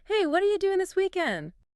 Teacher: doing often loses that final G sound in casual speech becoming doing.